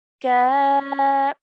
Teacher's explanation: Kaf has a vertical fatha, so 2 counts